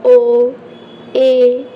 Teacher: सबसे पहले समृत स्थिति से कुछ अधिक खुलता है अर्थात मुख आधे से कम खुलता है जो अर्ध समृत स्वर है